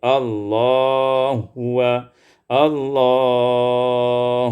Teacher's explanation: Allahi huwa, idghamul ha fil ha, diidghamkan ha pada ha